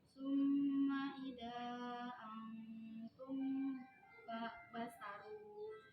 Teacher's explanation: apabila ada mim sukun bertemu dengan huruf ba, cara bacanya Mimnya didengungkan. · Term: ikhfa syafawi